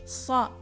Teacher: Similar to the English letter S, but more emphatic and darker. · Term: Sad